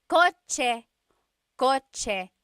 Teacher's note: The ch sound is a TS combination.